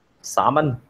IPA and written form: ˈsɑm ən (salmon)